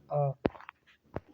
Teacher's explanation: जिन स्वरों के उच्चारण में मुख अधिक खुलता है उन्हें विवृत कहते हैं।